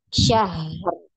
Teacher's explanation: Dialirkan dulu ha, baru disukunkan ro-nya, ya.